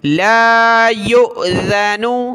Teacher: حمزہ ساکنہ جھٹکا دیا اور ذال پر زبان نکالیں گے